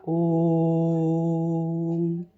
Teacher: ओम का उच्चारण करते समय ओ को लंबा खींचा जाता है, ओम। तो इसलिए इसमें उससे भी ज़्यादा समय लगता है, दीर्घ स्वर से भी ज़्यादा समय लगता है। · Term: प्लुत स्वर